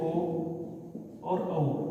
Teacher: ओ और औ का जो उच्चारण स्थान होता है वो कंठोष्ठ होता है, और कंठोष्ठ जो है वो उसका उच्चारण स्थान होने के कारण उसे कंठोष्ठ्यम कहा जाता है।